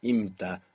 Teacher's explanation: native English speakers especially will have to watch themselves the temptation to insert a P there and say impta. That kind of happens very naturally for the English phonetics, but it's imta, as if it were IMTA, imta.